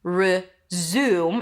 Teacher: I stopped taking English classes, but I need to resume my studies or resume classes to start again. Resume, it's an R sound, then a Z, and then the U as in food. Resume, close it with an M.